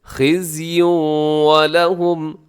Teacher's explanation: دنیا، قنوان، سنوان، بنیان، یہاں پہ اپنے غنہ نہیں کرنا، یہاں پہ ادغام نہیں ہے، بلکہ ظاہر کر کے پڑھنا ہے فی الدنیا، ایسے خزی ولہم، خزی زا ہے، زا میں سیٹی ہوتی ہے